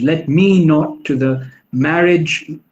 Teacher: The stressed syllables are me, true minds, marriage.